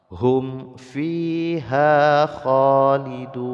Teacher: mim sukun bertemu dengan fa dibaca idhar syafawi, bahkan ini adalah syiddatul idhar, sangat-sangat diizharkan, tidak boleh sampai dengung